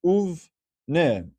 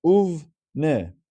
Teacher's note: Now what we're saying is, okay, but if there is a vav that's added before the word bene, what happens is that vav is pronounced as u, and this bene, the sheva underneath the bet, becomes a sheva nach, and it's read as uvne.